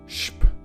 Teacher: You pronounce it as if it were SHP.